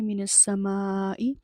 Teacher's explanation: مد متصل آ رہی ہے، 3 سے 4 الف کے برابر کھینچ کے پڑھیں گے۔